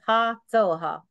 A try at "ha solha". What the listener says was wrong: Ha tsoha. Tsoha. You emphasize the L. Solha.